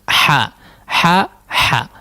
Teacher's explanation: huruf ha tolong diperhalus ya, atau dihaluskan cara mengucapkannya atau makhrajnya di wasatul halqi tengah tenggorokan ya, tenggorokan bagian tengah, ha dekat huruf ain di situ ya, tapi agak ke bawah sedikit, ha ya, ha.